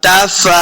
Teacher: फा के ऊपर खड़ी ज़बर है, देखिए इसको 2 हरकत हमने लम्बा करके पढ़ना है